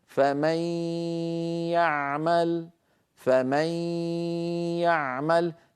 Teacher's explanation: نطق الادغام يكون بصوتين معا ياء من الفم معبر عنها بالاسهم الحمراء غنه من الخيشوم معبر عنها بالاسهم الزرقاء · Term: الادغام بغنه